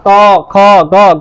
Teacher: इन सभी वर्णों के उच्चारण में ऐसा ही होता है कि जिह्वा कंठ की ओर पीछे मुड़ती है।